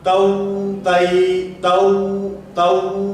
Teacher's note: مثلا ہونٹوں کے اندر گول کرنے میں مبالغہ کرنا، تو تی تو تو، ہونٹ بہت گول ہو رہے ہیں، اتنا گول بھی نہیں کرنے